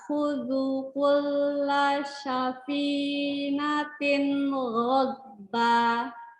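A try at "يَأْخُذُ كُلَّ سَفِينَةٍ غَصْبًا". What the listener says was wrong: Sa, bukan sya. Sa. Sinnya belum bersih, masih syakut. Bila kayak sapu gitu loh. Sapu. Coba bilang sapu. Ghadba. Panjangkan oboknya harus rokoah ya. Oboknya belum dapet nih. Oboknya masih belum rokoah. Oboknya masih obok ya. Nah, itu masih tegas banget berarti.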